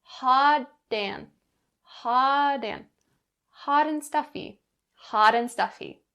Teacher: the connecting between hot and and that t sound changes to a d because it's in between vowels and you'll bring that sound over in front of and ha